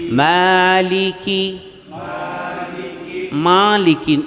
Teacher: مالکی ناک میں آواز نہ جائے